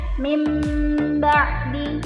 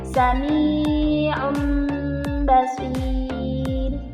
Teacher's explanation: dibalik menjadi huruf mim disertai dengan dengung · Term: iqlab